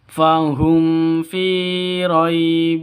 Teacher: mim mati bertemu dengan Fa jelas terang tidak boleh dengung tidak boleh ee panjang Kenapa karena izhar Safawi jelas mim matinya